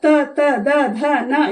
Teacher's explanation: ತ ದ ಧ ನ ಇವು ನಮ್ಮ ಹಲ್ಲಿಗೆ ತಾಗುತ್ತೆ ಇದನ್ನ ದಂತವ್ಯ ಅಂತನು ಕರೀತಾರೆ